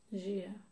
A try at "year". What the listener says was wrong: You want to say a bit like j. But it's a year as in yema. Year. You're saying j. It's a y. There's no j there. Year.